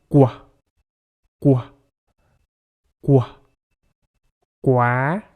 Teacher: like in the word to pronounce the qua sound the back the tongue presses up against the soft palate to stop the airflow then lower the tongue to release it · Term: Q sound